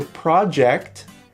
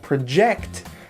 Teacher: the project the stress is on the first syllable and project the verb it's on the second syllable